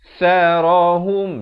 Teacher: Ada bunyi hamasnya, anginnya. Sa di hujung lidah.